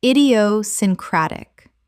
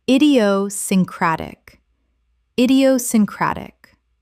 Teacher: Six syllables with the stress on the fifth.